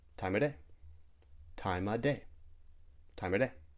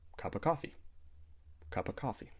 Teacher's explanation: Other times we might delete the V sound in of.